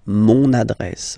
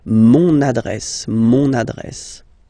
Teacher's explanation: you can hear now this little link so you've got to pronounce this n